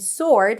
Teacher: remember that there is no W